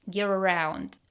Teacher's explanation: We have the linking R sound here, because gear ends in an R and around starts with a vowel. They're pronounced together without a break.